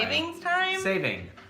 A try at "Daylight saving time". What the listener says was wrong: Not savings, saving.